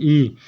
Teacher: हमारी जीभ तालु को छू रही है, बड़ी भी तालु को छू रही है। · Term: तालव्य